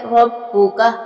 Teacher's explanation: را کے اوپر جو ہے زبر ہے اور یہ را پر اور موٹا پڑھا جائے گا۔ با کے اوپر شد ہے، اس کو سختی کے ساتھ ادا کریں گے۔